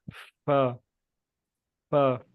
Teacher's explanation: اس میں ہونٹ صحیح طرح لمبے ہوتے ہیں، جس طرح ہم مسکراتے ہوئے ہونٹ لمبے کرتے ہیں · فا. اب دیکھیں اوپر والے جو دانت ہیں نیچے والے ہونٹوں کے ساتھ ٹچ ہو رہے ہیں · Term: فا کا مخرج